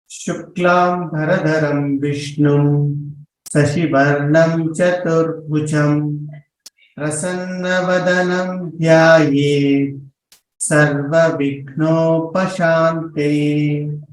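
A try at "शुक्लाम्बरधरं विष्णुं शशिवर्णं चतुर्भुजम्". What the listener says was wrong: I am highlighting the Mahapranas. Could you please repeat with the Mahapranas clearer? Tatra we do not split like that. We say Sarva Vignopashantaye. Another observation here, Shashi Varnam. The first sh was heard as Sashi. Slightly Sakara was heard. So that has to be clearer.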